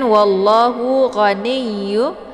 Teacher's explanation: ini ada tasydid di huruf ya, tinggal ditekan saja sedikit langsung dileburkan ke dalam huruf ya.